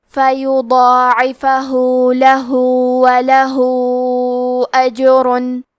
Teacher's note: مد صلہ کبرا تو ہم اپنی آواز 4 مد کے برابر لمبی کریں گے۔